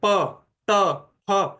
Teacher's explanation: जैसे हम बोलते हैं प, ट, फ, तो ये ध्वनियां जैसे कि बाहर जोर से फेंकी जा रही है।